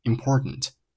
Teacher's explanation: Important 这个单词中间的字母 t 发生了一个 glottal stop， 叫做声门闭合音，读成了 important.